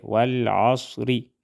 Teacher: اور وقف کی صورت میں را موٹا ادا ہوگا والعصر اور وصلاً را باریک ادا کریں گے